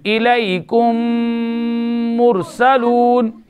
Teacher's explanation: یعنی میم کو میم سے ملا کر مشدد پڑھیں گے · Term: ادغام مثلین